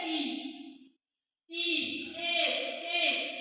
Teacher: ऐसे स्वर जिसका उच्चारण हम जीभ के आगे वाले हिस्से से करते हैं उसे हम अग्र स्वर बोल देते हैं